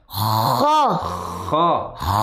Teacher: Nah, terdengar suara seperti orang ngorok.